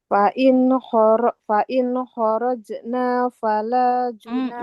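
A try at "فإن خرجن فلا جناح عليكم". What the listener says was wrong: Masih panjang. Nggak boleh dipanjangkan. Fa in kharajna fala junaha alaikum. Junaha. Nah, kita lihat di kata junaha, hanya juga nggak boleh panjang.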